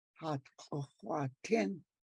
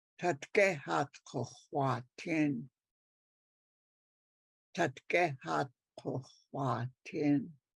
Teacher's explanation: I hope you can hear the tone mark where your voice goes up on that last I.